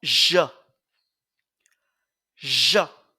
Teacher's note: un son de consonne voisé donc une consonne fricative voisé